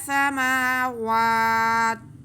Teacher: تو وقف ہم کھینچ کے کریں گے مد ادا کرتے ہوئے · ہم تنوین ختم کر کے زیر کی تا کو ساکن کریں گے تو وقف ہو جائے گا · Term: مد عارض